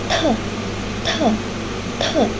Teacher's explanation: Perbedaannya terletak pada ketika kita melepaskan hambatan, aliran udara akan melalui ujung rendah dan meletup dan diproduksi dengan aliran udara yang lebih kuat sehingga menghasilkan bunyi aspirasi atau bunyi yang disertai dengan udara. The te glotis juga dalam keadaan terbuka sehingga bunyi dialirkan tanpa membutarkan pita suara. · Glotis juga dalam keadaan terbuka sehingga bunyi dialirkan tanpa menggetarkan pita suara.